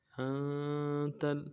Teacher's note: إنك أنت أنت، حمزہ کو نون کے ساتھ ملانا ہے، نون ساکن میں غنہ کریں گے، اور کاف کو آگے لام کے ساتھ ملانا ہے۔